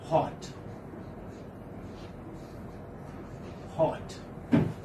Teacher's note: So it is a voiceless glottal Fricative.